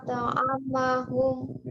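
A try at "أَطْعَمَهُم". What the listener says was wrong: ya, gunnahnya juga ya. Ditahan lagi.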